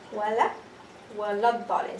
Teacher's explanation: Hamza al-wasl is dropped. Lam has no sukoon. Lam also dropped.